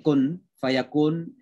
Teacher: Jadi suara nun dimasukkan ke suara fa. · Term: Ikhfa